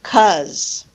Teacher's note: the loss of initial syllable in a word like because